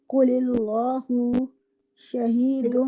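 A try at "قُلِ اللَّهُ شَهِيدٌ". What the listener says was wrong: یہاں پر آپ ورڈ اللہ کے لام کو نا لائٹ ہی رکھیے، کیونکہ یہاں پر زیر آ گیا نا ورڈ سے پہلے، تو پھر لائٹ پڑیں گے. قل اللہ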